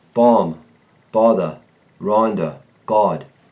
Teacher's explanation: The short O leans toward aw.